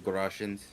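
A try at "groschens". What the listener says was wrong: Groshens? Why'd you roll the R so bad?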